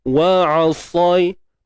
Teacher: idgham maksudnya masukkan bunyi mim mati ke dalam mim secara kamil, sempurna. Dengung dia berada di tahapan yang sempurna lah. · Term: idgham mithlain